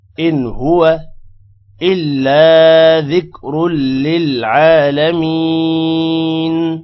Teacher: نون پر غنہ نہیں ہوگا کیونکہ آگے حروف حلقی ہا آ رہا ہے اور وا کو لمبا نہیں کریں گے إن هو إلا ذكر